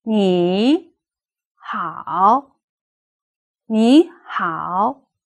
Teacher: if two thirds appear next to each other the first one should be pronounced as a rising tone which we call the second tone